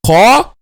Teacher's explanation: One of the differences between this letter and this one is just also heaviness and lightness. Qa, the the back of the tongue is raised, is a heavy letter, qa, but if it's light, it will be k, k, k, okay?